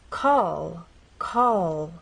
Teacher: lead into another consonant sound we dropped our tongue down but in this final position we're going to keep the tip of our tongue pressed against the bump in words like call call as you finish the word the